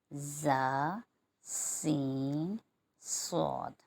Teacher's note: यह सीटी वाले हुरूफ भी कहलाते हैं क्योंकि इनकी अदायगी के वक्त हल्की सी सीटी की आवाज आती है · یہ سیٹی والے حروف بھی کہلاتے ہیں کیونکہ ان کی ادائیگی کے وقت ہلکی سی سیٹی کی آواز آتی ہے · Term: حروف صفیریہ